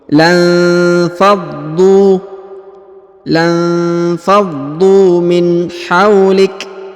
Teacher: huruf dha ditahan dan ditekan karena terdapat tanda tasdid. Lalu dipanjangkan 2 harokat karena di depannya terdapat waw sukun.